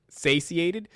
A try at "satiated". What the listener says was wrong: Not satiated. Yeah, the T. There's a T in there.